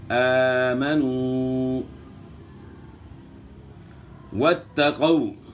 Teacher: واو کی ادائیگی میں ناتمام ہونٹ گول ہوتے ہیں